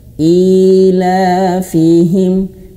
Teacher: Mad tabi'i itu bukan berarti dia panjang banget ya, bukan. Ila fihim, mad tabi'i itu cuma satu ayun saja